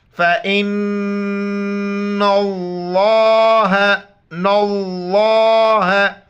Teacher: فَإِنَّ اللَّهَ, لفظ اللہ کے لیے قانون ذہن میں رکھ لے, لفظ اللہ سے پہلے دیکھیں گے جو بھی حرف آ رہا ہے اس کے اوپر زبر ہو یا پیش ہو, لفظ اللہ کو موٹا کر کے پر کر کے پڑھیں گے, اور نون پر غنہ کرنا ہے, ناک میں آواز چھپانی ہے.